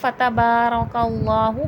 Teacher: اب آگے دیکھیں فتبارک اللہ. با پہ کھڑے زبر ہے، کھینچ کے پڑھا جائے گا. رو پہ زبر ہے، پر کر کے یعنی کہ موٹا کر کے پڑھا جائے گا.